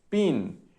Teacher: la P tiene poca sonoridad, la I tiene más sonoridad, sonority peak, el núcleo, y luego bajas, no tanto como al principio, en este caso.